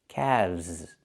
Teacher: The L is silent and we pronounce the V sound with vibration plus the Z sound like zebra together.